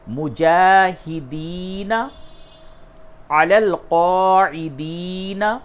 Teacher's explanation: کھڑا زبر کو کھینچ کے پڑھتے ہیں اور یا مدہ ہے اسے بھی کھینچ کر کے پڑھیں گے